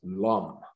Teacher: lenape words for example have no r sound so attempts at producing pronouncing rum came out as lam